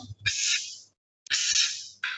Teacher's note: En griego sí tengo que pronunciar ambos sonidos. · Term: psi